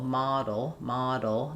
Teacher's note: If it's in the middle and it's followed by a vowel or syllabic L, for example, model, model, then it's going to be a flap sound.